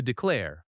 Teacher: Declare has stress on the second syllable.